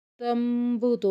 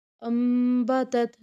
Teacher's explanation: نون ساکن اور تنوین کو میم سے بدل کر اخفا کریں گے، غنہ کریں گے، یعنی آواز ناک میں لے کے جائیں گے، جیسے کہ تمبوتو میں دیکھیں نون ساکن کے بعد حرف با آ رہا ہے، اس لیے نون کو میم سے بدل کر ادا کیا جا رہا ہے۔ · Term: اقلاب